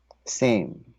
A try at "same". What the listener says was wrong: Same. I keep on hearing sem.